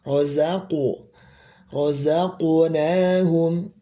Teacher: huruf qof di sini pantulannya adalah kembali ke asli tafhimnya huruf qof